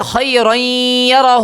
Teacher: مکمل یا بھی ادا نہیں ہو رہا اور مکمل نون کا مخرج بھی ادا نہیں ہو رہا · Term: غنہ بھی ناقص